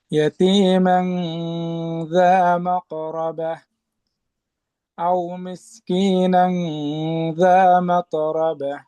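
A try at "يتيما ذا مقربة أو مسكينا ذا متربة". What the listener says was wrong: আচ্ছা, তায়ের ক্ষেত্রে মাত, এখানে শুধু একটু বাতাস যেন কলকলার মতো পূর্ণ একটা দ্বিতীয় অংশের আওয়াজ না হয়। মাত, ইয়াতীমান যা মাতরাবা, মাতরাবা।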